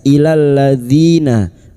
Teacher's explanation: kasrah bertemu ya sukun dua harakat mad thabi'i